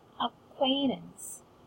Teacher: we do have 2 syllables stressed in this. It's ac and quain.